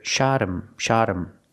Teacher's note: the word him is not a stressed word, the H becomes silent.